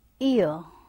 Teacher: here it is occurring at the place of E and then moving towards A, that is central. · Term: diphthong